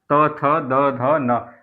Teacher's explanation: जिन वर्णों का उच्चारण करते समय जीभ का आगे का भाग दंत को स्पर्श करता है, उन्हें दंतीय व्यंजन कहते हैं